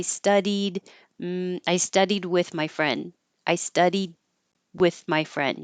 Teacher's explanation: you won't hear the D because you'll only hear that when there's a vowel after it